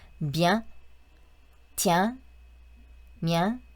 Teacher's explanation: 네, 비앙도 아니고 비앵도 아닙니다. 그 사이 발음이 맞다고 생각하시면 되시고요. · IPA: ɛ̃